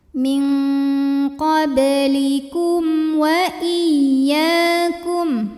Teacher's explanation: karena mim sukun menghadapi huruf selain mim dan ba yaitu w maka mim sukun dibaca jelas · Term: izhar syafawi